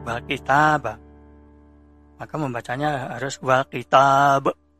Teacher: Di situ tidak sukun, tapi berhubung katanya itu dibawaqfan, kemudian akhir huruf ijaiyahnya itu qalqalah, maka dibaca qalqalah atau dibaca bergetar atau memantul yang lebih berat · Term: qalqalah kubra